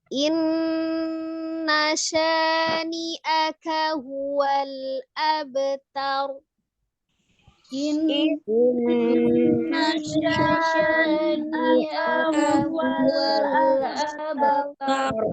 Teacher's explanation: K-nya tidak dipanjangkan tetapi tetap harus sempurna